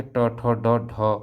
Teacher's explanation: मूर्धा स्थान मतलब आपकी जीभ जो है तालु से भी पीछे जा रही है